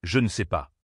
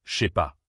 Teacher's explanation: Exemple correct, je ne sais pas. Mais à l'oral, le ne disparaît presque toujours. Ce que l'on entend, je sais pas. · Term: La chute du ne